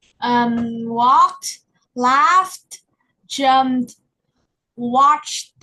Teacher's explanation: there's no extra syllable, and there's a quick T sound. The T is very short.